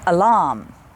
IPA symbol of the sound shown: ə